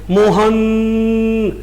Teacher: आप अपने मित्र को बुलाने जाते हैं, मोहन, तो न के ऊपर यदि जोर देते हैं तो आप सोच लीजिए कि न के साथ अपने आप ही प्लुत स्वर का प्रयोग हो गया